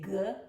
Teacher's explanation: This is your voice sound. If you put your fingers on your vocal cord and you say G, you'll hear your vocal cords vibrating. That's why we call it voice.